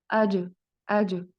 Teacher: जीम साकिन है और ये कलकला, हरूफ कलकला है, और इसको हिला के अदा किया जाएगा।